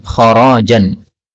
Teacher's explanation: Kharjan boleh dibaca dengan ra panjang, kharajan. Kemudian sadda boleh dibaca sudda.